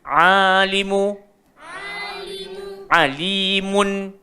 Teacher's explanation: So jangan bunyi alimun, tak nak mon, kita nak mun.